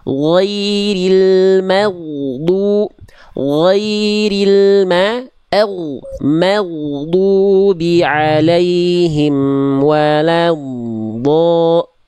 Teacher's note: Alirkan suara huruf dotnya karena dot punya sifat namanya rokhwah ya, mengalir suara. Tadi kurang ngalir sedikit Bunda suaranya.